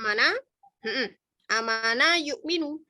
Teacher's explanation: Jadi aslinya ini A-nya ada 2, hamzahnya ada 2, kemudian dipanjangkan sehingga namanya badal. Badal itu adalah ganti. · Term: mad badal